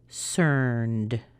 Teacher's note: if you have a voiced sound before an ed, like this where you use your voice, you're also going to use a voiced sound for the ed, and in this case it's d. If it were unvoiced, we would use a t sound.